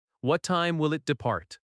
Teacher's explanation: Notice how will it often links.